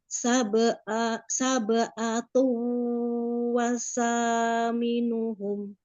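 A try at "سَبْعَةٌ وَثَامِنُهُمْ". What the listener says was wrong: Sa-nya tidak ditasdid.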